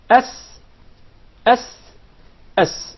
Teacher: the letter Sin comes from the tip of the tongue, and the palates of the two front top incisors